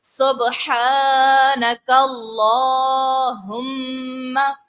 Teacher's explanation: پھر لام جو ہے، لام میں کھڑی حرکات ہے، اس کو ہم نے کھینچ کر ادا کرنا ہے